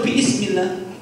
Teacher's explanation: hamzahnya jatuh karena hamzahnya merupakan wasal, hamzah wasal